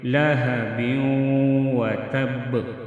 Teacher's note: لہب وتب، لہب تنوین آیا ہے، تنوین کے بعد واو آیا ہے، تو ادھر غنہ کریں گے، ناک میں آواز لے کے جائیں گے۔ وتب، وقف کی صورت میں با ساکن ہوگا تو قلقلہ کریں گے۔